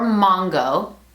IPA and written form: ˈmɑŋ.ɡo (mongo)